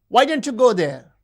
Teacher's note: The high fall in WH question refers to surprise.